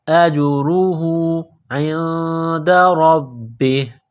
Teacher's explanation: را کے اوپر پیش ہے، را کو موٹا کرنا ہے